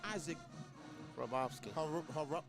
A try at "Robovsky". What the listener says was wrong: No, the H is silent. Robovsky.